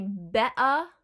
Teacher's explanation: in the middle of a word it has a glottal stop